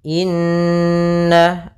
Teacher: ada bacaan gunnah, yaitu kita panjangkan 2 harokat